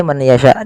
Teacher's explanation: memasukkan nunnya kepada huruf ya dan hukumnya yaitu idgham bighunah. Kemudian pada lafal yasyau, pada lafal sya di sini ada bacaan mad wajib muttasil, yaitu mad yang terjadi apabila ada mad thabi'i.